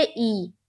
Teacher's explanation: زیر کو جلدی پڑھیں، تھوڑا بھی نہ کھینچیں، معروف پڑھیں، مجہول آواز سے بچیں